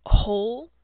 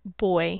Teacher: focusing on the long o sound like in the word whole versus a sound that is heard in words like point or boy